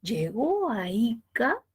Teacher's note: llegó a ica que tiene tono final descendente si cumple función distintiva ese tono ese acento ese tono descendente